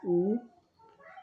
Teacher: tem que fazer o biquinho semelhante ao francês né o i o u do francês u você pronuncia um I com biquinho